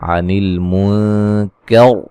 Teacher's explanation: یہاں نون ساکن کا باریک اخفا ہے اور را کو موٹا ادا کریں گے وقفاً